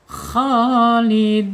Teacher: Ya, panjangnya dua harakat boleh, empat harakat boleh, enam harakat boleh. Tetapi dalam satu surah pilih salah satu ya.